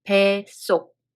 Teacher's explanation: In between 배 and 속, 사이시옷 is added, first of all. And when we read it, 받침 시옷 is dropped, and the following 시옷 becomes tensed.